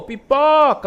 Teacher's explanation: Olha só o o pó como ele estica um pouco mais. Então, a sílaba tônica, ela é a penúltima, né?